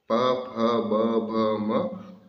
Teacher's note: इनका उच्चारण स्थान है ओष्ठ, इसलिए इस ध्वनि को बोलते हैं ओष्ठ ध्वनि।